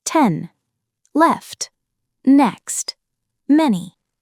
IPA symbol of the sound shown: ɛ